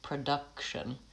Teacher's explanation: Production, I have the stress on the middle syllable, it's lengthened, and this first syllable, that changes to vowel schwa. So I lose my pure vowel because it's reduced to production.